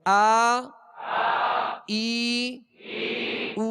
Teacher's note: حمزہ کو ابتدائی حلق سے ادا کرنا ہے جیسے آ، اور عین کو آ فرق ہے، اور ای عی یہ اس میں فرق ہے، او عو یہ دونوں میں فرق ہے.